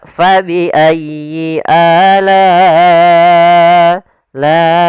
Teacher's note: Panjangnya adalah empat harakat atau lima harakat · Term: mad wajib muttasil